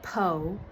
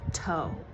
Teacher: sounds that are not produced at the lips become produced at the lips. Like if a kid says po instead of toe. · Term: Labialization